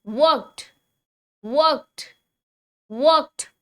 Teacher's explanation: ईडी की आवाज इसमें आएगी ही टी के जैसी।